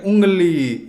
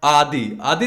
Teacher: ऐसे स्वर नाक से बोले जाने के कारण अनुनासिक कहलाते हैं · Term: अनुनासिक स्वर